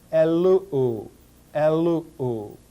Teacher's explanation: that intervocalic sigma will elide with resulting contraction of the two vowels remaining · And if you look on page 110 in your grammar, you will see that when epsilon contracts with omicron, you get the resultant diphthong oo